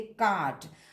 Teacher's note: consonant के पहले अगर आर होता है तो उस आर का उच्चारण नहीं होता है